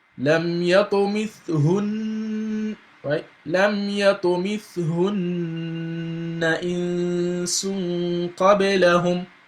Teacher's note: you have to assume you're pronouncing those two set of Nuns with Ghunna